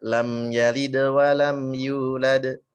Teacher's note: kalau qolqolah kubro kan udah enggak ada huruf setelahnya lagi jadi pantulannya berasa lebih jelas lagi